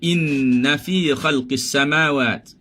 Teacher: Inna, kita dah sebut inna maknanya dengung penuh.